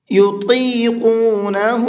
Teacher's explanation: یہاں پر طا کو بھی اور قاف کو بھی دونوں حرفوں کو منہ بھر کے پڑھیں گے۔